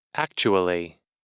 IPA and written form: ˈæktʃuəli (actually)